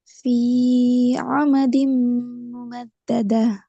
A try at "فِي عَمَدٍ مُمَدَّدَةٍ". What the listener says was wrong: இன்னும் குறைக்கணும். ஃபீ அல்ல, ஃபீ ஆமதின். ஃபீ ஆமதின் في عمد.